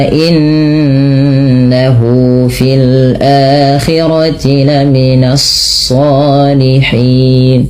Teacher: tahan bunyi suara nunnya sepanjang dua harakat karena ia bacaan gunah.